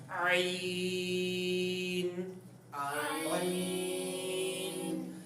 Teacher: واضح طور پہ آپ نے اس کو حلق کے درمیانے حصے سے ہی ادا کرنا ہے. اگر آپ حلق کے درمیانے حصے سے ادا نہیں کریں گے تو یہ غلط تصور ہوگا، اس کو درست نہیں کہا جا سکتا.